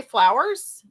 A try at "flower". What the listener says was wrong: See, that sounds like FLOUR.